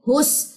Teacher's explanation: ہا کی پیش کو اس سین کے ساتھ ملائیے